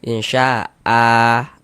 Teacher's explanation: Bunyi fathatainnya atau tanwin fathahnya dirubah menjadi fathah, sehingga dibaca insya'a, dipanjangkan dengan 2 harokat. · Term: mad iwad